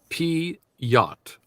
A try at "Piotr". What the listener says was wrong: Piet. But they added that little R at the end, the Piet.